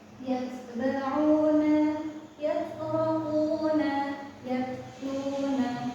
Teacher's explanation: untuk ta itu dia sifatnya tertahan, lalu ada hamsnya. Jadi di belakangnya itu ada angin yang keluar. Jadi ditahan dulu. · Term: ta sukun